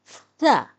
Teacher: ثا زبان کو دونوں دانتوں کے درمیان لانے سے ادا ہوتا ہے اور اس کی آواز ہے ثا۔